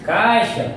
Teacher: primeiro apareceu a vogal e depois apareceu a semivogal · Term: ditongo decrescente